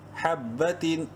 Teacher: تنوین کے بعد حمزہ حروف حلقی میں سے ہیں، اظہار کریں گے یعنی ظاہر کر کے پڑھیں گے